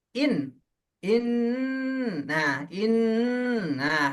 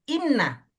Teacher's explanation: berdengung di rongga hidung tuh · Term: Gunnah